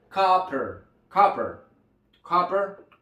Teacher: es una A, donde tenemos que abrir bastante la boca para poderla pronunciar